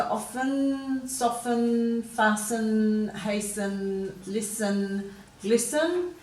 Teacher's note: those T's are silent in the first we really have some they've got them finishing with a schwa sound · in all of these words we've got a silent T so some people still pronounce the T in often and some people are making it silent